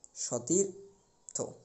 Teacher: দন্তস এর পরিবর্তে আমরা উচ্চারণের সময় তালিবাস্য টা ব্যবহার করব